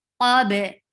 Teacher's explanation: Min qabil, for qaf is heavy. For fatha, open your jaws, and you are giving qalqala on ba